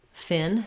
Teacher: Fin is made with the upper teeth and the lower lip together.